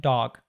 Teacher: most Americans would say the word dog, like this with a /ɔː/ sound